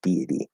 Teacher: Deity with a flat D. So we go D, small Y connector into I, and then into a flap D with the E sound again